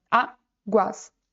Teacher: ela termina em ditongo, porque a gente tem o u e o a aqui juntos, ou seja, duas vogais juntas que ficam na mesma sílaba